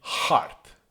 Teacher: you overdo the H because of the Spanish influence